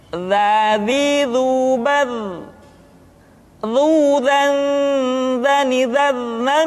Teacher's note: Diucapkan dengan menyentuhkan ujung lidah dengan dinding dua gigi seri bagian atas seperti kita mengucapkan huruf tha. Ujung lidah boleh ditampakkan ataupun tidak nampak. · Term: huruf za